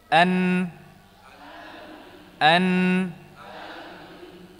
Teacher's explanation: minihi tahalu huruf nun dia dari ujung lidah ujung lidah ada huruf nun dari ujung lidah bertemu dengan apa dengan ujung langit-langit atau gusi ya disertai dengan gunah · ujung lidah bertemu dengan apa dengan ujung langit-langit atau gusi ya disertai dengan gunah maka dia punya dua bagian makhrajnya ada bagian lidah ada bagian khaisyum juzul lisani dan juzul khaisyumi an an an namah mudah Insyaallah